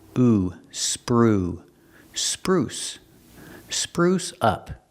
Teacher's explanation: use the long ooh like food and moon